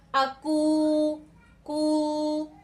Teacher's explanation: जो ऊ साउंड आ रहा है ये हमारा कहां से आ रहा है, ये हमारा अल जौफ से आ रहा है। · तो ये क्या हो जाएगा, वाव मद्दा हो जाएगा, और वाव मद्दा की जो मिकदार है वो कितनी है, 1 अलिफ है, ठीक है। तो वाव मद्दा की मिकदार 1 अलिफ है, और जब वाव मद्दा होता है तो उसकी आवाज हमारी कहां से आती है, अल जौफ से।